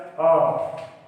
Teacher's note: ह्रस्व एक मात्रिक स्वर होता है और इसके उच्चारण में सबसे कम समय लगता है।